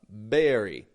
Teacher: Berry. There's a buildup of voice, and then it bursts out.